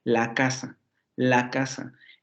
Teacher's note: el la no tiene ningún acento no funciona como una palabra independiente se pega a casa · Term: palabra prosódica